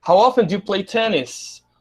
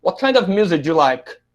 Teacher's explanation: os verbos auxiliares aí, o do, né, que foi utilizado das perguntas 2 a 5, ele quase que desaparece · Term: schwa